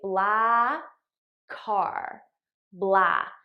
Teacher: I just eliminate one of the k sounds and I use it to link these two words together. So I say blah car, blah.